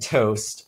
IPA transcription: tost